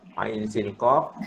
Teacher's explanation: Jadi pada huruf ain boleh baca dua wajah. Sama ada nak baca 4 harakat atau nak baca 6 harakat. Ain tu boleh baca 4 harakat atau 6 harakat. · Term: mad lin lazim